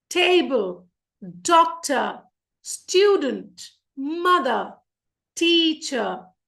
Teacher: Quickly, the first syllable will be stressed.